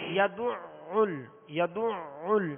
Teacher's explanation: یدعل، یدعل، اب یہ دال پر بھی عین پر بھی پیش ہے اور عین پر تشدید ہے، اس کو دو مرتبہ پڑھیں گے، دوہرا پڑھیں گے، وسط حلق سے ادا کریں گے